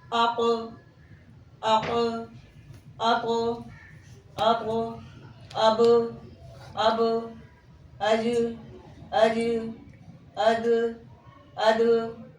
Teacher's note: बिल्कुल वैसे ही जैसे आप किसी गेंद को دیوار پر مارے تو وہ وہاں رکتی نہیں بلکہ پلٹ کر واپس آتی ہے. ویسے ہی ان حروف قلقلہ کی ادائیگی میں آواز اپنے مخرج میں رک نہیں رہی بلکہ پلٹ کر واپس آ رہی ہے.